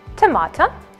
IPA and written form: təˈmɑː.təʊ (Tomato)